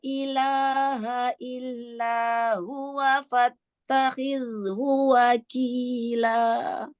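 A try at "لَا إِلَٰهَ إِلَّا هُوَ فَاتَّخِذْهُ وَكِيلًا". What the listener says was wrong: Masya Allah ya, kurang sedikit aja ya nafasnya ya. Nah, di sini huruf zal juga ketemu haknya dhammah ya. Lam sukunnya sudah lebih bagus. Jadi disempurnakan ya lam sukunnya. Fattakhidhu, fattakhidhu.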